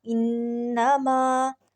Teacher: نون پہ دیکھیں تشدید آ رہی ہے، تو ناک میں ہم آواز کو ٹھہرا رہے ہیں، اس کو کہتے ہیں گنہ۔